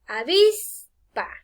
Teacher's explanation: avispa lleva el acento en la penúltima sílaba. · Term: Palabras graves